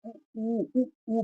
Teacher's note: आपकी जब ऊ बोलोगे तो आपके जो ओंठ है वो गोल हो जा रहे हैं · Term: वर्तुल